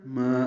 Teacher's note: ما الف مد اصلی 2 حرکات لمبا کریں گے.